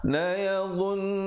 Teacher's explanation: dha juga di hujung lidah tapi bunyinya tebal